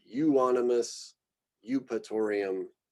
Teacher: we just combine this EU and it often just gets said as U